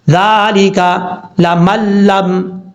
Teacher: اب جب ساؤنڈ میں پڑھیں گے تو نون کو نہیں پڑھیں گے، میم کو ڈائریکٹ لام کے ساتھ کنیکٹ کریں گے، صرف ہجے میں نون پڑھا جائے گا، ذالکا لمن لم، اس طریقے سے، یا زبر یا، کاف نون پیش کن، یکن۔